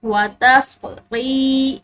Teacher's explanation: را کے بعد یا ساکن ہے، اس کو لمبا پڑھیں گے